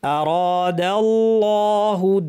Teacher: দালটা পাতলা থাকবে, আল্লাহের লামটা ভারী হবে।